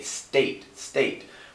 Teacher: the ST are pronounced together with no vowel in between